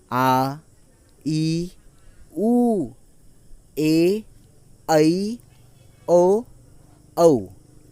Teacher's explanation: इन स्वरों में क्या होता है, इनका जो उच्चारण होता है वो थोड़ा लंबा होता है। इनके उच्चारण में हमें हर्ष स्वरों से दुगना समय लगता है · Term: दीर्घ स्वर